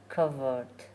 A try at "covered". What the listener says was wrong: You're saying a T at the end, it's a D. Covered. Covered. Because you're saying covert, which is secret, no? Covered. You're saying a T.